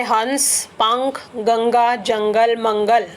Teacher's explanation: अनुस्वार में जब हम बोलते हैं तो मां या ना की आवाज आती है